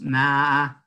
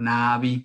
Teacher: Na, hay una especie de, si ustedes se tocan aquí, hay una especie de laringización muy débil, por eso yo digo que es una laringización débil cuando decimos na, no o navi, ¿verdad?